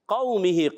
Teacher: वाव साकिन से पहले ज़बर आ रहा है, वाव लीन होगा, नरमी से अदा करेंगे। मीम के नीचे ज़ेर हरकत है, इसको नहीं खींचेंगे। · क़ाफ ज़बान की जड़ और तालु के नर्म हिस्से से अदा होता है